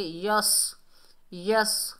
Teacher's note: یس، یس، یا کو صاد سے ملائیں گے۔ صاد حروف استعلا میں سے ہے، موٹا ادا ہوگا۔